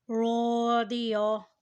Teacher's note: را کے اوپر زبر اور ساتھ الف ہے، اسے بھی کھینچ کر ادا کریں اور را کو موٹا یعنی پر ادا کریں